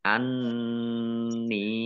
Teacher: nun tasdid dibaca gunah atau mendengung, ditahan 2 harokat. Kemudian nun kasroh, ya sukun, mat tobi'i, tetapi karena bertemu dengan huruf alif di kata yang berbeda, maka menjadi mat jaiz munfasil.